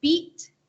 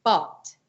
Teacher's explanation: that e sound hits really high in your hard pallet versus the a sound is further down in your throat